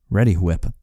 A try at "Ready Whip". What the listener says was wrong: Why are you putting so much emphasis on the H?